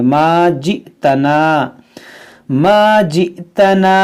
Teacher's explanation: ये हमज़ा साकिना है, इसको झटका देकर पढ़ेंगे